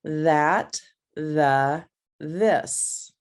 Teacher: Well, is at the front of my mouth because it's my teeth, my tongue is sticking out when I'm making that sound